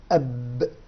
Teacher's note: خرجت الباء من الشفتين، وضعنا قبلها همزة أب، فعرفنا مخرج أو مكان خروج الباء.